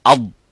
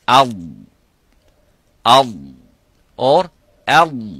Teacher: Up, it stops completely. Okay, but for the dad, it doesn't stop completely, but release slightly towards the front, towards the makhraj of the lam, but it doesn't touch the front of the top front of the mouth